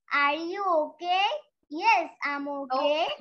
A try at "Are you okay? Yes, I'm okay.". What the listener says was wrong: Okay, না, ক না, ক না, okay. ইংলিশে ক বলে কোনো উচ্চারণ নাই, ক।